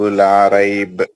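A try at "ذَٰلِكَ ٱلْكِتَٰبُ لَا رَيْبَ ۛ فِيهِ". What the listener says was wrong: دیکھو سر, آپ نے پڑھا لا رائب پڑھا آپ نے.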